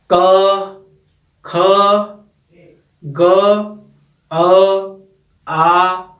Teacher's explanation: कंठ से हम क वर्ग का उच्चारण करते हैं, अर्थात कंठ से क, ख, ग, घ ये आते हैं।